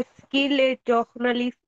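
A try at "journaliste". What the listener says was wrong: journalist, okay. Not jogna, but jugna, হ্যাঁ? Journalist, okay. Journalist, okay.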